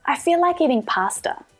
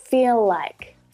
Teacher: the L at the end of feel and at the start of like pull together? Feel like, those words come together.